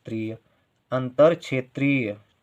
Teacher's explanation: त्रा के साथ ई का उच्चारण तो बड़ी ई का उच्चारण, त्रीय देर तक है